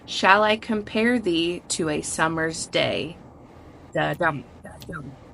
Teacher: the foot or the beat consisting of the unstressed syllable followed by the stressed syllable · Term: iambic pentameter